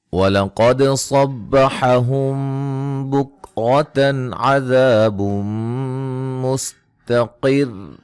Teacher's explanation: قاف کو موٹا ادا کریں گے، دال پہ قلقلہ، صاد کو موٹا ادا کریں گے، یہاں میم ساکن کا اخفا ہے، اور را کو موٹا ادا کریں گے۔